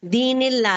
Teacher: अल्लाह का लाम जो है लाइट होगा